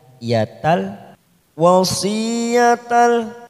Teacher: Ada tak marbuto tanwin fathah tanwin bertemu dengan huruf lam. Langsung masuk tanpa mendengung, tanpa ditekan lama-lama, namanya bacaan idgham bila gunnah.